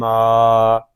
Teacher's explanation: میم الف زبر ما، اس کو ما نہیں پڑھیں گے، ناک میں آواز نہیں جانی چاہیے